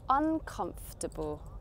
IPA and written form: ʌnˈkʌmf.tə.bəl (uncomfortable)